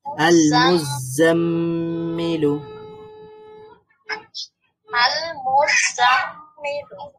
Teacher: মিমের মধ্যে একটু দেরি করলাম একটু গুন্না করলাম কারণ মিমের মধ্যে সাদ্দা আছে আর মিম সাদ্দা এটা একটা গুন্নার হরফ আল [মিউজিক] মুজাম্মিলু আল